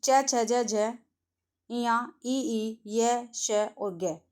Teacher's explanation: इनका उच्चारण स्थान तालु या तालव्य रहेगा।